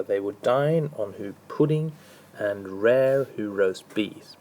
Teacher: we're dealing with a rising rhythm but it now has two unstressed followed by a stressed syllable · So next we're going to look at the anipest anipest is essentially like an am just a bit longer. So we have two unstressed syllables followed by one that's stressed. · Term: Anapaest